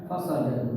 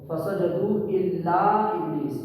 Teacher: تو اب ہم قاعدہ کیا پڑھے تھے؟ مد منفصل میں حرف مد کو ہی لمبا کرتے ہیں 2.5 الف کے برابر